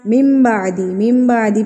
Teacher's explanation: نون ساکن کے بعد اگر حرف با آ جائے تو نون ساکن کو میم میں تبدیل کر دیا جاتا ہے، میم میں بدل دیا جاتا ہے، تو اس کو ہم نے میم پڑھنا ہے نہ کہ من پڑھنا ہے۔ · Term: اقلاب